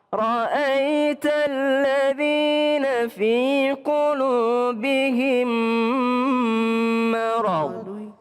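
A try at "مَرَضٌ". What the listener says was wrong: Jangan pakai itu bukan qalqalah. Kalau huruf bod itu adalah bukan huruf qalqalah. Jadi jangan marad enggak, tapi marad. Beda kalau huruf dal ya. Masad.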